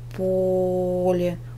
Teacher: ударение падает на первый слог